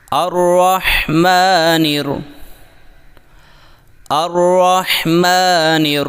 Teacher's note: را کو مشدد ہونے اور زبر کی وجہ سے خوب موٹا کریں، یعنی الرح، اور ہا کو ساکن ہونے کی صورت میں حلق سے صاف نکالیں۔